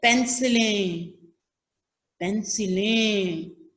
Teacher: नून गुन्ना की आवाज आ रही है